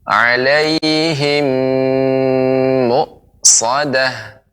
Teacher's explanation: Alhamdulillah, walaupun sedikit yang perlu diperhatikan seperti mim mati bertemu dengan mim, maka ini apalagi menjadi seperti mim bertasydid, maka ditambah dengan gunnah, yaitu dengung ya. Lebih diberi tempo ya. · Innaha 'alaihim muqsadah. Alaihim, mimati bertemu dengan mim, ini lebih ada dengungnya, maka lebih diberikan tempo